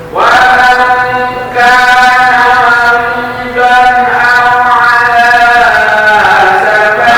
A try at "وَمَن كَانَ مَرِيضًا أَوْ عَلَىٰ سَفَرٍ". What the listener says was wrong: jangan hanya dua harakat anak.